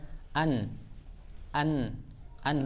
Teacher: Keluar dia kemudian suaranya dari hidung. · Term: sautil gunnah